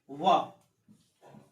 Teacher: एकमात्र ऐसा लेटर जो दंतोष्ठ है ये पूरी सीरीज में, वो है व।